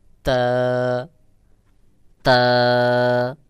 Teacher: তা উচ্চারণের সময় বাহিরের দিকে হালকা বাতাস বের হবে